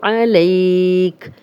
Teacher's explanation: لئی جو ہے یائلین ہے، جزم والی یا، لام پہ زبر، تو یائلین نرمی سے بغیر کھینچے پڑھتے ہیں، لیکن اگر آگے ہم اس کے آگے جزم لگا کے کسی حرف پہ وقف کرتے ہیں تو اس کو ہم لمبا بھی پڑھ سکتے ہیں۔